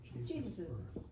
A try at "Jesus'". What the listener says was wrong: How do you say this word? Jesus. How many S's are in this? 2 S's. There is no S there.